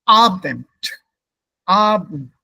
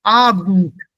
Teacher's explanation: So the E is not pronounced here. It disappears.